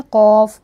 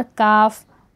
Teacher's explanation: कौफ होठ आगे आते हैं और काफ होठ पीछे जाते हैं